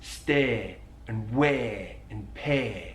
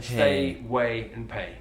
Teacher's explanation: he elongates the diphthong a